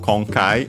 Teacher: Konkai, by the way, accented on the first syllable